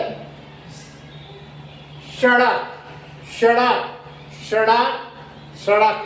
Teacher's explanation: हमारा जो जीभ की जो अगला हिस्सा है, जो नोक है, वो दांत के पास ऊपर जो मसूड़ा है वहाँ स्पर्श करेगी, तो वहाँ ये दांत यह दंत्य स का उच्चारण होगा।